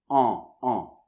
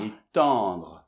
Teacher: la deuxième est plus comme un A, mais ça vient plus du nez.